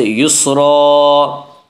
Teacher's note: 2 زبر پر وقف کرنا ہو تو ایک زبر کے ساتھ الف پڑھا جاتا ہے